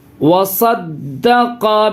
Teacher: دال پہ تشدید ہے، تشدید والے حرف کو 2 بار پڑھتے ہیں